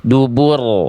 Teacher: Tebal karena ro sukunnya didahului oleh Doma.